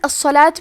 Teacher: حرف الصاد کو 2 حرف کے برابر پڑھیں گے اور اسے موٹی آواز میں بھی پڑھیں گے